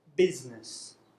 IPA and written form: ˈbɪznəs (business)